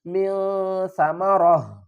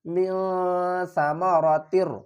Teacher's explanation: وقف کی صورت میں اس کو ہا پڑھیں گے اور جب ہم وصل پڑھیں گے تو پھر اس کو ہا پڑھیں گے.